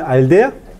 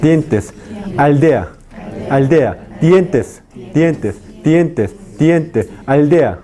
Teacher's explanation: El ápice de la lengua toca ¿qué? No la región alveolar, sino los dientes superiores. Por tanto, es el sonido que ápico dental.